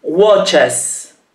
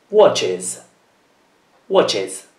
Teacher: In questo caso, la vocale viene pronunciata e la S diventa una Z.